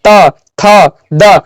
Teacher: त का उच्चारण स्थान दंत हो जाएगा